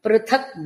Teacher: పృథక్ అన్నప్పుడు మహాప్రాణ థకారం